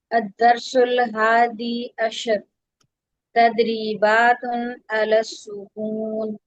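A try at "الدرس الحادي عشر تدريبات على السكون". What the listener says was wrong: आपने लाम पर झटका दिया, झटका नहीं देंगी।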